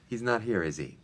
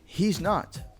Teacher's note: Did you notice the phrase, he's not, flows as if it's one word? The reason is that the S in he's sounds like a Z, he's, because it's between voice sounds.